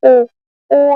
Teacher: अर्ध संवत स्वर इनके उच्चारण करने पर संवत से थोड़ा अधिक मुख खुलता है। जैसे ओ ओ हम जब उच्चारण कर रहे हैं तो उससे हमारा मुख थोड़ा सा अधिक खुलता है।